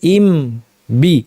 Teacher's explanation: তাহলে যদি ইজহার করতাম, হ্যাঁ, তাহলে হামজা একবার মিমের বাসায় যেত, একবার বায়ের বাসায় যেত, ইম বি এভাবে পড়তো। ইম বলার পর দুই ঠোঁট আবার আগের জায়গায় নিয়ে স্বাভাবিক অবস্থায় নিয়ে আবার লাগিয়ে বি।